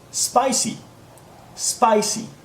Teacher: be clear and careful not to include any e sound before the SP just go straight to the SP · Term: sp sound